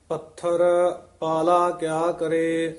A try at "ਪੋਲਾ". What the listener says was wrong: ਇਹ ਪਾਲਾ ਨਹੀਂ ਕਹਿਣਾ, ਪੋਲਾ ਹੀ ਉਚਾਰਨ ਕਰਨਾ ਹੈ।